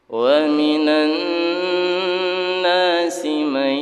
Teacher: masukkan ke huruf ya tapi didengungkan. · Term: idgham bi gunnah